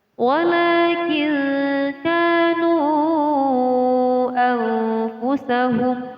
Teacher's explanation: Cara membaca mad jaiz munfasil dibaca sepanjang 5 harokat atau 5 ketukan.